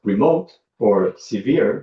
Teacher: they're stressed on the second syllable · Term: final stress